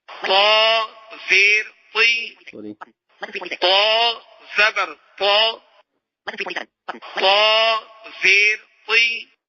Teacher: یہ حروف مستعلیہ ہم اس کو بھی موٹا کر کے پڑھیں گے، مگر جو ہے ہونٹ گول نہیں کریں گے